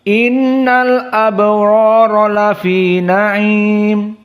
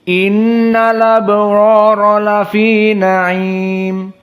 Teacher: qiraah wars hamzahnya dihilangkan dan harokat pada hamzah dinaql kepada yang sebelumnya yakni lam. Inilah istilah dengan an-naql.